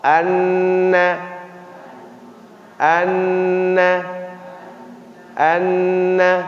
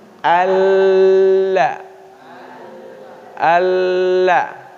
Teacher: na kena gusi gigi kita sebelah atas. Tapi kalau la tidak, dekat dengan ujung lidah, pinggir, agak pinggir dia. Awal pinggir lidah menuju langit-langit.